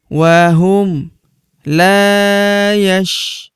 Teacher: Huruf ru kita panjangkan 2 harokat karena terdapat waw sukun di depannya